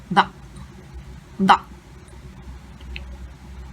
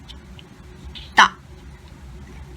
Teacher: Hamza sukun makes a hiccup sound.